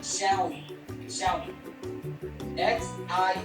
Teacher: Technically, the first syllable is more shio than show. But the difference is fairly subtle to most American ears.